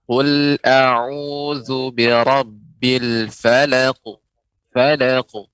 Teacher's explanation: itu dia pantulannya cepat ya dari ketika pengucapan qafnya